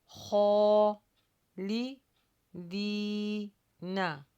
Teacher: خو پر ہونٹوں کو گول نہیں کرنا لیکن اس کی آواز ہیوی نکلے گی